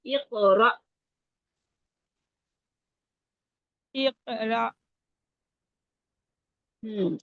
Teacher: एक इकरा रा रा जबर हमजा है, हमजा की आवाज एकदम रुकेगी ना। एक इकरा रा नहीं, रा लंबा ना करे ना, अलिफ मद्दा नहीं है ये हमजा है।